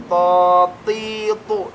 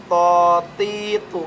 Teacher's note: Cara pengucapan huruf to tadi pangkal lidah naik dan sedikit dibulatkan bentuk mulutnya ya. To, ti, tu, tidak monyong.